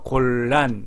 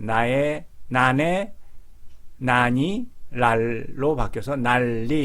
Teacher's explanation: 니은과 리을이 만나면 말할 때 니은이 리을로 바뀝니다. 리을이 유음이라고 하기 때문에 이거를 유음하라고 합니다.